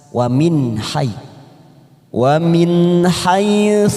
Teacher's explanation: ada nun sukun yang bertemu huruf H tidak ada warnanya namanya bacaan idhar halqi kita baca jelas tanpa mendengung